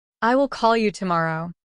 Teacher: in the sentence, I will call you tomorrow, the words call and tomorrow are stressed, creating a distinct rhythm. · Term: stress timing